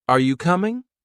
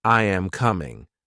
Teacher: rising intonation at the end while statements usually fall for example say are you coming with a rising tone at the end and then say I am coming with a flat or falling tone